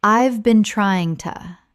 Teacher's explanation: We aren't aiming for slang right now, but look at a phrase like, "I have been trying to." When spoken naturally, the H in have often disappears and the words run together.